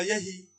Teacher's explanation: ह का तो पूरी तरह से लोप हो गया। ह का भी लोप हुआ और अ का भी लोप हुआ। दो लोप हुए। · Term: व्यंजन लोप